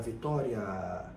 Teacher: gente fala Vitória Então veja que o a é mais longo o a sendo mais longo dá uma pista pra gente de que ele é a base da sílaba e assim ele é a vogal e não a sem semivogal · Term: ditongo